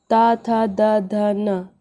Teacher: और देखिए ता का ता था, ये देखो ये दांत, ता जो जीभ आपकी है ये दांत के पास जा रही होगी।